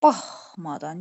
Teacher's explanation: Görürsünüz, baxmadan vurğu birinci hecadadır.